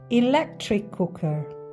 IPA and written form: iˈlek.trɪk ˈkʊk.ər (electric cooker)